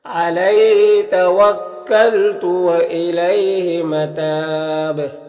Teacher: متاب میں وقف کی صورت میں مد عارض وقفی ہوگا اور با میں قلقلہ ہوگا